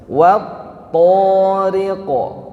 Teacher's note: di th itu ada tasdid ya ada tasdidnya maka ditahan dulu baru lepas Wat thq kemudian thnya Hanya dua harakat saja yang sering terjadi